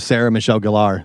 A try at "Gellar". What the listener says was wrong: Galar? It's Geller. Like Ross and Rachel. not Galar.